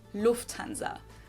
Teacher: In English, people usually say Lufanza, but in German, we say Lufanza. So, the emphasis on the first syllable